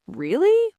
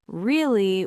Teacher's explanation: really? With a rising voice means you're surprised or interested.